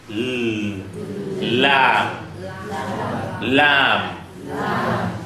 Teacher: the lam in Arabic, my tongue is flat, touching my upper teeth from the back. So it is not at the middle, it is touching the upper teeth, but from the back.